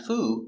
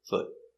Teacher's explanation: It's the short foot. Not the long oo, not foo, but foot.